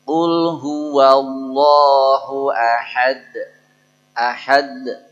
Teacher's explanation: th itu kalau disukun jadinya qqolah memantul dan pantulannya seperti fathahnya jadi pantulan pada Qalqalah itu seperti fathahnya